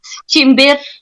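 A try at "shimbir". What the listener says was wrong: Is that with a chi? Well, in Somali we say shinbir with a CH. Sorry, SH.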